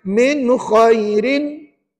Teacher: nun mati dan n kalau jumpa dengan huruf Kha di situ maka hukumnya mesti izhar halq dan dibaca nyata terang jelas tanpa tanpa dengung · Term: izhar halqi